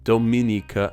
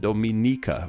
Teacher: With Dominicans from the Dominican Republic, the me syllable is stressed, while Dominicans from Dominica, the ni syllable is stressed